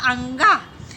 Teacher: अंग का उच्चारण स्थान कंठ के साथ नासिक भी होता है